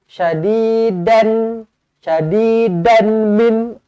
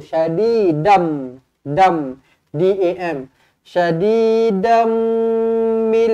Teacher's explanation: Dam, jumpa mim sabdu kena dengungkan, kena rapatkan bibir.